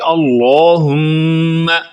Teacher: اللہ کا لام موٹی آواز میں، بھاری آواز میں پڑھا جائے گا۔ اللہم نہیں کریں گے بلکہ اللہم۔